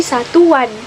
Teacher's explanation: Di saat kita bilang u-nya itu seperti ada W di tengah-tengahnya gitu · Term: bunyi pelancar w